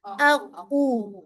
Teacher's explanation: कू के साथ आपके होंठ जिसे कहा जाए गोल होते हैं